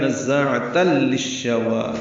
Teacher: ہے، 2 حرکات لمبا، عین وسط حلق سے ادا کریں گے، تنوین کے بعد لام آنے کی وجہ سے ادغام کامل ہے ، نزاعۃ للشوى، تا کو لام سے، لام کو شین سے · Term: ادغام شمسی